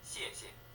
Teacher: The second syllable isn't stressed, thus rather weak.